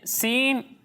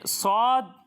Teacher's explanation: سین کو باریک پڑھتے ہیں اور صاد کو ہم پر پڑھتے ہیں، یعنی موٹا کر کے پڑھتے ہیں